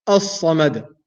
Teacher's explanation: the word as-samad has a lam in it, has a lam which is silent, which is called lam shamsiyya. I'm not pronouncing the lam, and we mentioned the ruling for lam shamsiyya in the previous classes.